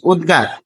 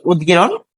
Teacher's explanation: তাহলে ১ থাকলে হবে ৩, তাহলে ত এর জায়গায় হবে দ। ফলে আমরা দেখছি যে অঘোষ অল্পপ্রাণ ধ্বনি ত, ঘোষ অল্পপ্রাণ দ হয়ে যাবে।